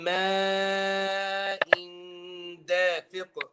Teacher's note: Here this mad is mad muttasil. It's mad within one word. So we're going to be reciting it 4 or 5 حركة.